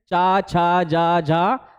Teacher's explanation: हमारा चा वर्ग हमारा तालू से उच्चारित होता है तो चा वर्ग में जितने भी व्यंजन आएंगे सब तालव्य होंगे